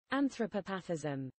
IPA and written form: ˌænθrəˈpɒpəθɪ (anthropopathism)